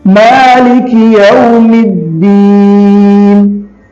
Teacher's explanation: الدین پڑھتے ہوئے دین ناک میں آواز نہیں جانی چاہیے۔